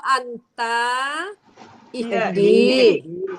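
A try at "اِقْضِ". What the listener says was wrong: Jangan panjang.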